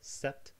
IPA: sɛt